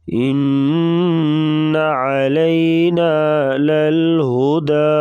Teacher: نون اور میم کے اوپر شد ہوگی تو غنہ کر کے پڑھیں گے